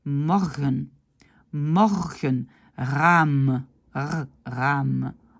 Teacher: Normalement, c'est un R roulé, un R roulé. Mais le R dans la gorge, donc R, est maintenant accepté aussi, mais on ne le fait pas aussi fort qu'en français.